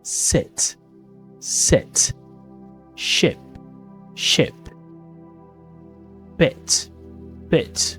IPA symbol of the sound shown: ɪ